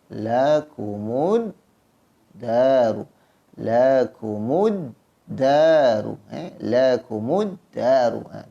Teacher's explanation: Pada alif lam ini tidak ada tanda sukun, maka tak perlulah kita sebut lam ini. Kenapa? Kerana pada lam ini tidak ada tanda sukun, maka kita terus masuk lakumuddaru. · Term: idgham syamsiyah